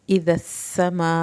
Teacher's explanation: मद्दे वाजिब को 3 अलिफ के बराबर लंबा किया